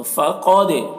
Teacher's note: دال میں قلقلہ ہوگا کیونکہ دال حروف قلقلہ میں سے ہے اور اس کے اوپر جزم ہے